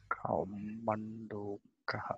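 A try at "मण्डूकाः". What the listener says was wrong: Mandu, here also it is long.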